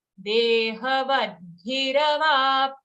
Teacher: Okay, not vadhira, but bhira. Bhi is a short sound. After that, full ra.